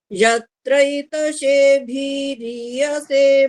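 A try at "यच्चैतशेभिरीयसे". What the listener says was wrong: जी बहुत सुंदर, ये भीरीय से हो गया, इसमें ह्रस्व है भी भा में, तो भीरीय से।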